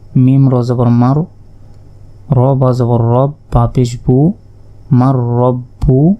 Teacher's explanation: নুন সাকিনের পর র অক্ষরটি এসেছে ইদগামে বেগুনার অক্ষর তাই এটি গুন্না ছাড়া পড়তে হবে